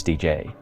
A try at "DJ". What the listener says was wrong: Well, it's also the emphasis on the J.